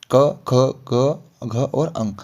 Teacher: देखिए कवर्ग के उच्चारण में, यानी कि जो पहले वाला सबसे पहले हमारे पास जो रो है, क, ख, ग, घ और अंग, ये जो है इनका उच्चारण होता है कहाँ से, कंठ से होता है।